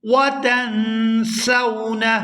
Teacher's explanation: یہاں نون ساکن پر اخفا کریں گے